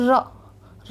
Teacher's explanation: कांपते हुए आवाज़ निकल रही है ना, जीभ हमारी कांपते हुए बाहर आ रही है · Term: प्रकंपी